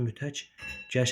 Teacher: qoşa samitlərin birincisi kar, ikincisi cingiltə tələffüz olunur.